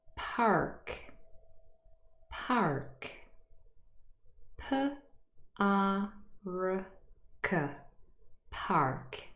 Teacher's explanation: this word is now said with a rhotic accent